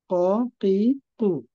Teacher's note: কফের ক্ষেত্রে আমরা হচ্ছে নরম তালুর সাথে লাগাবো স্যার